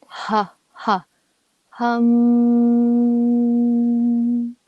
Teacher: that sound is really coming direct through the throat bronchial passages you can feel it coming from the back of the throat the back of the breath and that's the sound that really